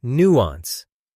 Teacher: When you learn nuance, stress the first syllable.